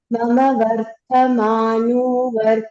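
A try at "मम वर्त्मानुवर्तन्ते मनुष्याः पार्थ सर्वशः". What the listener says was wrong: There's no vartamanu. It is mama vartmanu vartante. No varta. It is mama vartmanu vartante. Mama vartmanu vartante. That's the way you should say.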